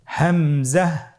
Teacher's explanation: হা হরফটি যেখান থেকে আমরা উচ্চারণ করেছি একই জায়গা থেকে আমরা হামজা হরফটি উচ্চারণ করব হলকের শুরু হতে।